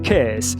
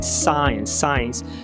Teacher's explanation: Fonema 32 é o S. Nome técnico é consoante fricativa alveolar desvozeada. Apelido é um S sibilante, o som da cobrinha, enfim, é o S do português mesmo.